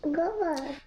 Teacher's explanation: The alveolar fricative s in the onset cluster sk is replaced with a velar stop g, while the coda in bus is omitted entirely. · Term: deletion